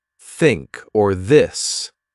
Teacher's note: there was no sound where you put your tongue between your teeth